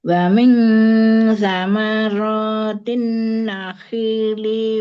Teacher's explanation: Guna musadada tahan dengungnya 3 harokat di rongga hidung merupakan guna tingkat pertama guna akmal. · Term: Nun tasdid